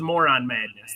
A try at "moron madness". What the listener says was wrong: Although it sounds like you're saying more on madness and not moron madness.